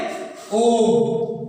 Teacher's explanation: ह्रस्व से 3 गुना समय लगता है